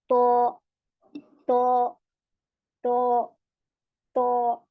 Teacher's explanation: यह में पीछे से जबान उठ जाती है जिसकी वजह से त हमारा मोटा हो जाता है जब हम इसे मुंह भर के पढ़ते हैं तो तो तो